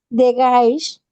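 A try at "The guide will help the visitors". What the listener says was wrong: No, es que tú dices the guide, como con sh al final, no, es con D. The guide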